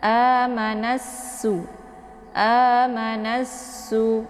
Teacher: Cara membaca " nasu " melibatkan alif lam asyamsiyah . Jadi cara membacanya adalah dengan menekan nun dan menggabungkannya langsung ke sin